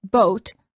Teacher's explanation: for the o sound as in boat the lips are rounded and tense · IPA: /oʊ/